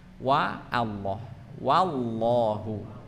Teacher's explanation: wallah bukan wallah wallah wallah ya tapi wa Allah wallahu ya WAnya dibaca dengan harf yang tidak terangkat pangkal lidahnya dalam artian adalah wau dibaca dengan huruf yang tipis wa Allah wallahu ya Jadi bukan wallahu wallah w bukan bukan